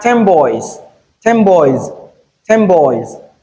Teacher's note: The sound borrows the feature of the b sound, which is bilabial, and changes to bilabial nasal.